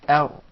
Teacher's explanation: That's an English Ra now, where the tip of the tongue is far away from the gum